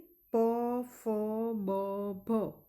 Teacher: આ બોલાય ત્યારે આપણા બંને હોઠ ભેગા થાય છે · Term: ઔષ્ઠ્ય